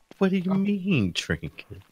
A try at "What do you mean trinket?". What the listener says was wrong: You didn't do a high enough pitch on that.